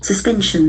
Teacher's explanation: The accent falls on the second syllable. Suspension. There are three syllables. Suspension.